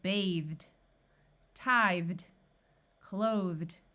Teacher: The suffix ED is pronounced like the letter D after words ending in the voiced sound of th